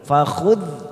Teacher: Fakhudh ra sukun didahului fathah, maka kita baca tebal tafkim.